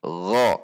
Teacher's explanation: Berarti digesek. Gho dengan menegangkan pangkal lidah karena sifatnya isti'la.